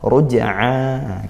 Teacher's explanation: Jim sukun Qalqalah Sugra dibaca mantul